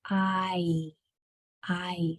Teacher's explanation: I is actually 2 sounds combined into one because your mouth changes shape